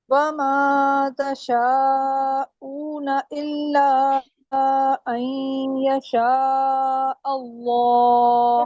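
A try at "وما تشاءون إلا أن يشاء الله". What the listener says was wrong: वमा को क्यों लंबा किया आपने? वमा भी 3 हरकत पे गया आपका, फिर दोबारा पढ़।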